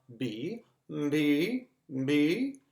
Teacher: You actually also add a very brief M to the front of a B